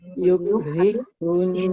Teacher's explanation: Hunnya dia kena ditahan hun. Kenapa? Karena nunnya sabdu.